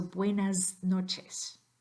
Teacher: You should hear some vibration there because N is voiced. So the S at the end of buenas, that comes before noches, that S at the end, needs to be pronounced as a Z